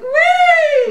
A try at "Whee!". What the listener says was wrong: No, see, you're going back for it, sweetheart. Whee! So this is an easy thing for you to change. If I'm standing right here and you see me go, whee! You see where that goes?